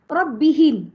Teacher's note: bila mim sukun kita kata mim sukun ya bacaannya pendek jelas tidak berdengung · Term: izhar